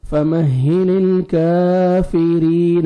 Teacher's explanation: الف صغیرہ ہے الف مدہ کے قائم مقام ہے فمہل الکافرین را کے نیچے کسرہ ہے را کو باریک کر کے پڑھنا ہے اور یا مدہ 1 سیکنڈ را کو کھینچنا بھی ہے کافرین